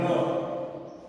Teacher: ऐसा आभास होता है कि जब र की ध्वनि अपन उच्चारित करते हैं तब स्वर तंत्रियां कंपन करती है, प्रकंपित होती है, र घर्षण करते हुए, कंपन करते हुए उच्चारित होती है। और जब हम इसका उच्चारण कर लेते हैं तो ऐसा लगता है कि ऊपर से गिराया हुआ सा व्यंजन रहता है, इसलिए लुंठित है।